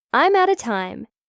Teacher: Another example, I'm out of time means I am out of time. The out of becomes outer.